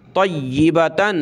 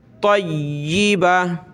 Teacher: ذریۃ طیبہ، طا یا زبر طی، یا زیر ی، طیبہ زبر با، تا دو زبرتن، طیبتن وقفاً جب رکیں گے تو گولتا ہا بن جائے گی